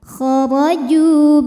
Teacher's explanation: hukumnya Mad thi'i dahiri karena ada ww sukun didahului harakat damah maka Jim dipanjangkan dua harakat